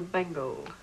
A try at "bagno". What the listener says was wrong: Bagno. The G is silent.